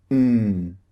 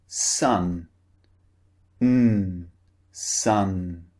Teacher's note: the lips are open but the tongue is blocking all the air from coming out of the mouth so the air comes through the nose instead